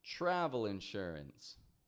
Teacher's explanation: notice how I'm blending that tr together in travel, right? I'm not saying travel, but travel insurance.